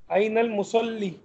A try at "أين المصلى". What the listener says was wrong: أين المصلى کیونکہ یہ نقطے نہیں ہیں